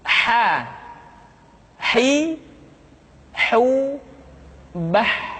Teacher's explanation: Berikutnya adalah huruf ha. Huruf ha dikeluarkan dari tengah-tengah tenggorokan.